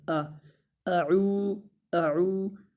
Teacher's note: یہ واو مدہ ہے، اس کو تھوڑا سا ایک الف کے برابر لمبا کریں گے